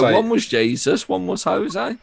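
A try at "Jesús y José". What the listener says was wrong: You're pronouncing one in Spanish and one in English. You got it either both English or both Spanish. for Jesus and Jose. and Jesus and Jose.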